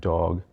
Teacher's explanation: the D sound in the word dog, a voiced alveolar stop